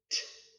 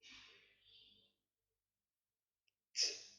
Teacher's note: The T sound is similar to the D, except we don't use our vocal cords. To make the T sound, begin by bringing the tip of your tongue to the roof of your mouth.